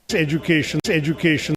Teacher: I actually did change the size of that first syllable, but it was the third syllable that was bigger. So it was like medium size, small size, big size.